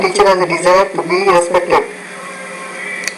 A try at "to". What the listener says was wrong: Remember to do the word to. Make that longer. To.